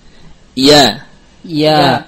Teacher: Jahar, tidak mengalirkan nafas. Rakhawah, mengalir suaranya, dan mustafilah, tipis. · Tidak ada gunnah yang melewati khayshum.